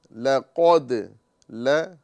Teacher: लाम बारीक फिर कफ पुर और फिर दाल बारीक